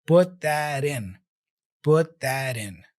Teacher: So the first T in put is dropped. And then the final T there of that is the flap T.